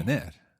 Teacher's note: equal emphasis to both the sön and the är